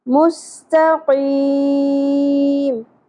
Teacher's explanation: قاف کو پر کرتے کرتے تا نہیں پر پڑھنا. اکثر لوگ مستقیم پڑھ رہے ہوتے ہیں، تو نہیں ہے، ت.